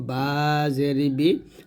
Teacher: বা টা দুই ঠোঁট মিল করে আমরা উচ্চারণ করব